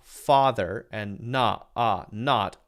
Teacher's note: the short o is the same as one of the short a sounds or at least very very close